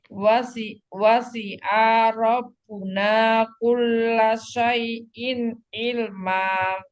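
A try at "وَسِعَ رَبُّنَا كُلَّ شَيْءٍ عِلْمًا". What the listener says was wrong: Coba wasi'a rabbuna si'a ra. A-nya jangan panjang. Wasi'a rabbuna.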